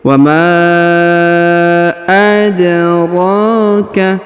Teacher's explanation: huruf ra dipanjangkan 2 harokat karena di atasnya terdapat tanda alif kecil